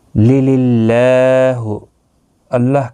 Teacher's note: اللہ کا لام اس زیر کی وجہ سے باریک پڑھا جائے گا